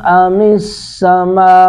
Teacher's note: میم پر مد متصل ہے، 3 الف کھینچیں گے